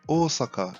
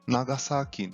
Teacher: o som do japonês representado pela letra S tem pronúncia com som de S mesmo, e não de Z, como muitas vezes ouvimos.